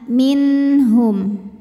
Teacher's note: huruf halqi atau huruf tenggorokan yaitu ha maka nun sukun dibaca dengan jelas ya Jadi ini bunyinya n dan tidak kita tahan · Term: izhar halqi